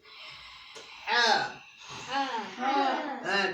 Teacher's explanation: So ha is pronounced from the middle of the throat. So when you're pronouncing the ha, you must make sure that you feel a bit of pressure on the middle of your throat.